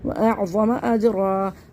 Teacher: دو زبر کی تنوین حالت وقت میں الف مدہ سے بدل جائے گی، دو زبر سے ایک زبر ختم ہو جائے گا، ایک باقی رہ جائے گا، تو یہ الف مدہ بن جائے گا.